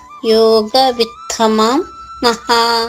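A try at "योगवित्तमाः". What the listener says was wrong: మామ అనకూడదండి, విత్తమాహ తేచాంకే యోగ విత్తమాహ అంతే, విత్తమాహ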